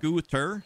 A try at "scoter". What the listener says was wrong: S-K-O-O would be scoo. Scoter. Well, T-E-R. The E with the single consonant between the E and the O technically makes the O long, so it'd be scoter.